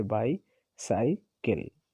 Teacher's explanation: stress syllable followed by two unstressed syllable as in bicycle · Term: डैक्टिल